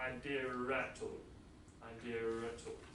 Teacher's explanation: We add an R. This is an R which is not in the spelling, which we do pronounce in fluent speech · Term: intrusive R